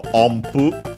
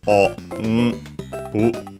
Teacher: that n, because of the following pu, is pronounced as m, so ompu, unless you pronounce it separately, and then it's o, n, pu.